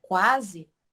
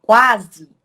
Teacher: Já aqui na palavra quase, nós temos o U e o A. O nosso U é a nossa semivogal, ela possui o som mais fraco, e o nosso A é a nossa vogal. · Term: ditongo